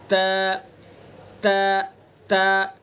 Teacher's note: ज़बान की नोक और सना उलिया की जड़, यहाँ से ता को अदा करेंगे। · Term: ता का मखरज